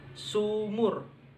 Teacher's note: Vokal belakang tinggi bundar. Cara pelafalannya U.